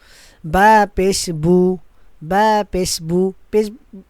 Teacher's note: পেশের উচ্চারণের সময় মুখ একদম গোল হবে, ঠিক আছে, একদম গোল।